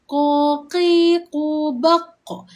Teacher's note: Huruf qaf ada lantunan, kena lantunkan suara.